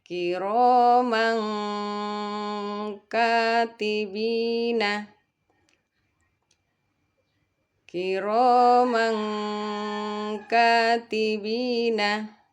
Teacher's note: Bunyi tanwinnya atau nunnya kita samarkan ke Kaf dengan seakan-akan membunyikan huruf Eng dan didengungkan dan ditahan selama dua harakat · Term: ikhfa